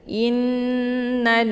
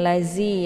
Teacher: makharijul huruf dha ini tepatnya di ujung lidah dengan gigi seri bagian atas.